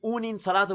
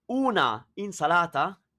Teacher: the a of una is elided, killed, moved, goes away